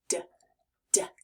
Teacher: Now let's try D, as in the word duck or drum. This sound is made just the same as the t sound, but this time our voice will be on.